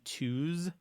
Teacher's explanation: the U, for example, is called the closed back rounded vowel